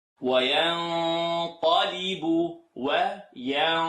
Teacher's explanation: Nun sukun followed by qaf. Tongue not touch. It's going to be a heavier sound.